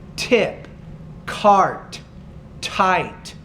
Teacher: you get a little bit more air out when you say tip cart tight